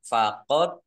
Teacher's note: bacaan Qalqalah atau memantul dibaca memantul dan ditampakkan pantulannya